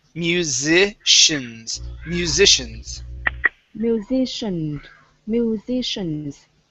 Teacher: so this is going to be a Z sound here, then an SH.